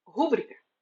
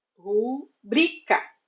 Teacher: tenho em mente que se trata de uma paroxítona, cuja sílaba tônica é bri e não ru. A forma padrão na fala e na escrita é rubrica.